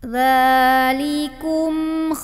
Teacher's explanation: dzal, jangan mantul, ujung lidah ketemu ujung gigi, alirin suaranya